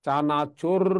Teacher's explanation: জিহ্বার অগ্রভাগে কম্পনের সৃষ্টি হয় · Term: কম্পনজাত বর্ণ